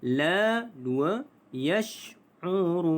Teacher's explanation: La. 2 harakat kerana mad asli huruf alif. La yash'urun. 4 harakat kerana mad arid lisukun.